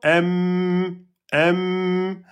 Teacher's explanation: Le mim, on ferme les lèvres. M m Alors si on ferme les lèvres, le son il va sortir par où ? Et ben, il sort par la cavité nasale